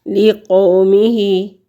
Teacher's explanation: لِقَوْمِهِ، واو ساکن سے پہلے لفظ پر زبر ہے تو واو لین ہے، اور واو لین جو ہے اس کی مقدار ہے ایک حرکت کے برابر، اس کو لمبا کریں گے۔ لِقَوْمِهِ، اور ہا کے نیچے کھڑی زیر ہے، اس کو بھی ایک حرکت کے برابر ہم لمبا کریں گے۔